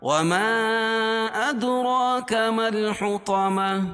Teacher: مد منفصل ہوتا ہے اور اس کی مقدار 2 الف ہے، ادرا دال پر قلقلہ کیونکہ دال حروف قلقلہ کے 5 حرفوں میں سے ہے اور اس پر جزم ہے · حروف مدہ کے بعد حمزہ دوسرے کلمے میں ہو تو مد منفصل ہوتا ہے اور اس کی مقدار 2 الف ہے